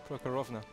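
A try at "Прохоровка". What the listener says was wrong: That's not right either. There's no N in there.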